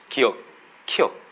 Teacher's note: 혀 뿌리가 지금 목구멍 뒤를 한번 닫았다 열립니다